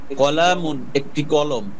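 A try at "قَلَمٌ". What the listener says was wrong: কলামুন টান হবে না, কলামুন একটি কলম,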